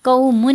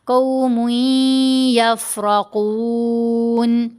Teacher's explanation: अच्छा जी, तो यहाँ हम पढ़ेंगे वमा हुम मिनकुम वलकिन्नहुम कौमुन नहीं पढ़ा, मीम के ऊपर दो पेश, आगे या मुशद्दद, यहाँ यरमलून का इदगाम है, मीम को या से मिलाते हुए गुन्ना करेंगे